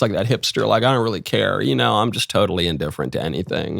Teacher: Vocal fry, glottal fry, that's the way that millennials talked. That's the late 2000s, early 20 teens, people just kind of talk like this, like that hipster, like, I don't really care.